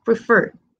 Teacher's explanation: sé que prefer es más fuerte en la terminación fer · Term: sílaba tónica